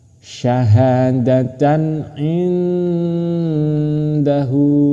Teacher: Cara membacanya harus dengan samar dan berdengung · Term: ikhfa